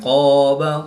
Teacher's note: الف سے پہلے قاف پر ہے تو الف کو پر پڑھیں گے